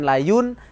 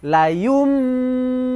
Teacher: seakan-akan Nun sukunnya itu adalah mim sukun yang dibaca dengung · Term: bacaan iqlab